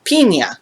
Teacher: In Spanish, the vowel I sounds like the EE in seen, but just a touch shorter. To give you an example, when English speakers say feet or street, the Spanish speaker hears what sounds almost like 2 I's.